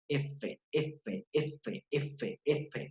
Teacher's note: ¿Vibra o no vibra? No vibra, por eso es sorda